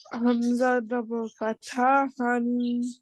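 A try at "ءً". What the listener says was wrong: No, don't say han. This gives the sound a, right? Yes, alif sound. An,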